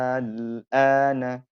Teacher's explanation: Madnya panjang kemudian ketemu dengan sukun. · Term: mad lazim kilmi mukhaffaf